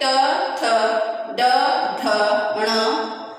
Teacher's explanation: ट वर्ग के जो कि मूर्धा, जो थोड़ा और ऊपर आकर छूते हुए निकलते हैं